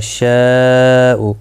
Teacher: مد متصل ہے، 4 الف کی مقدار کے برابر کھینچ کر پڑھیں گے